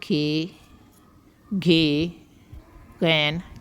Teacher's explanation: زبان کا جو پچھلا حصہ ہے وہ تالو سے ٹچ کرتا ہے اور آواز پیدا ہوتی ہے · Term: غشائی آواز